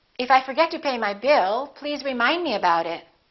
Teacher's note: In that sentence, we have two focus words, bill and remind.